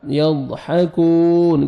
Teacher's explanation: کاف کو باریک پڑھیں گے اور 1 سیکنڈ کھینچیں گے، واو مد ہے